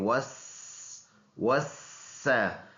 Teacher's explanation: سین یہ سیٹی والا ورڈ ہے، پڑھتے ہوئے سیٹی ویسل ساؤنڈ نکالیں گے